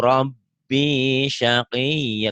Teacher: Rohnya kayak kurang bulat gitu.